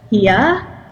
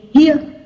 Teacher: So, for example, the word here in English would be here in Vietnamese. We make it really short, and it sounds like a monophthong.